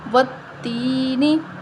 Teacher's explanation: یا سے پہلے زیر ہے تو یا مدہ کو ایک الف کے برابر لمبا کریں گے